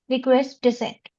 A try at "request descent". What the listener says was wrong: Try to put emphasis on the words related to the request that you're making. Just sound a little more specific using special, weightage on the calls. Like just make it sound a little better.